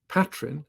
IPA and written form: ˈpatrɪn (patrin)